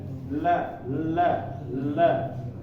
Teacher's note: Jadi huruf lam ini semuanya tipis kecuali di lamul jalalah. Dan makhrajnya adalah ketika ujung lidah bersama pinggirannya ini di atas gigi ya, di atas gigi seri. Nah, ini ditempelin di sini nih, di langit-langitnya la.